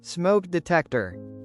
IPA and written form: smoʊk dɪˈtɛktər (Smoke detector)